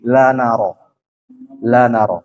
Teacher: ujung lidah bertemu dengan gusi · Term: lam